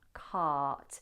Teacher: In modern RP, you'd have the long a vowel, which is the long r, dropped jaw, lots of space in the mouth, cart. But he did a long kind of nasal a.